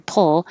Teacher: the r pull i'm putting my tongue in the l position my tongue is going to the l before i release my p so that's why i said make the l first and then